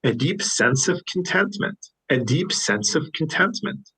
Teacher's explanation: sense and of are linked together